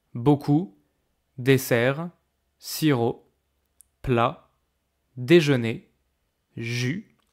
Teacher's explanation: Every time there's a final consonant at the end of the word, but you don't hear it. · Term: consonne finale non prononcée